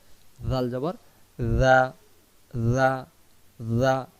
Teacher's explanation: জাল অক্ষর জিহ্বার আগা থেকে নরম করে পড়তে হবে